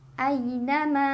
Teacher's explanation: Ma mad tabi'i karena ada alif sebelumnya fathah, dibacanya panjang 2 harokat.